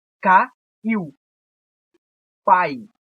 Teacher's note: O I é uma vogal, o U é uma semivogal. A gente tem uma sequência de vogal e semivogal. Então isso é um ditongo.